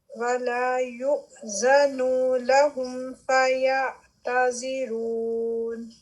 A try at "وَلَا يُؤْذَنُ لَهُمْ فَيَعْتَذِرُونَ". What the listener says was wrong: اس میں مجھے آپ کے نون کے اوپر جو حرکہ ہے بڑی ہوئی لگ رہی ہے. وَلَا يُؤْذَنُ. نون نہیں کرنا. وَلَا يُؤْذَنُ.